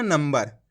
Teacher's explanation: अनुस्वार की मात्रा लगी हुई है उसके बाद वाला अक्षर कौन सा है बा ये रहा बा तो आधा मा पढ़ दिया